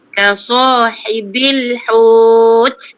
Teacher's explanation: Ha di pertengahan halkum. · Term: ha pedas